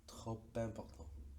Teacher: trop no se pronunciaría esa P final, pero con la liaison aparece el sonido